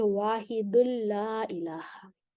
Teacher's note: तनवीन के बाद लाम आ रहा है तो यहाँ पे इदगाम बिला गुन्ना होगा